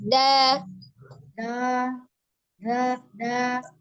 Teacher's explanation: Tidak dipanjangkan. Ujung lidah ada di pangkal gigi seri atas.